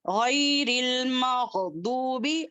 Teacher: غین کو ادنی الحلق سے پڑھیں گے اور موٹا پڑھیں گے